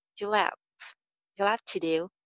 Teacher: Have ka jo ha sound hai wo skip ho jayega.